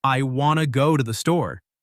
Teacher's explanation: want to becomes Wana and to becomes ta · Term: connected speech